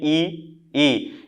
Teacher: ये जो होठ के किनारे किनारे हैं वो बंधे रहते हैं और सिर्फ थोड़ा सा मुंह खुलता है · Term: समृद्ध स्वर